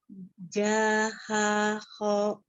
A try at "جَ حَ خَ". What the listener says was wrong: Tidak dipanjangkan. Ja, ja, ja, ja. Kalau hurufnya tadi ya kho, tapi ketika dia sudah berharokat fathah maka dibacanya kho. Ja, ha, kho. Ya, kita belajar membuka mulutnya ya.